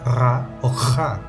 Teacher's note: las uvulares que usan la úvula que cuelga del paladar